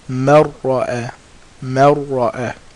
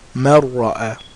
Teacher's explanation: We're putting the Noon into the Ra. It's disappearing. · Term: without ghunna